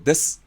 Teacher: in actual natural pronunciation, it sounds like des, without the vowel. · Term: devoicing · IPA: [des]